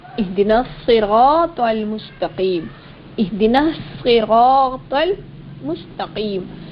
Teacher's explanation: صاد اور سین دونوں سختی سے پڑھے جانے والے اور ان میں سیٹی کسی آواز نکلتی ہے، یہ دونوں حرف سیٹی کسی آواز والے حرف ہیں اور ان کو سختی سے بھی پڑھا جاتا ہے، لیکن ان دونوں میں فرق کیا ہوگا؟